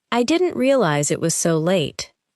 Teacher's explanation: Try not to pause between realize and it. Let the sounds connect.